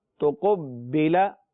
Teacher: اگر تو با ساکن الگ سے ہوتا تو ہم صرف اور صرف جو ہے یہاں پر قلقلہ کرتے، لیکن با مشدد ہے تو مشدد جو ہے اس وجہ سے 2 با ہیں اور آپس میں ادغام ہو رہا ہے، مل رہے ہیں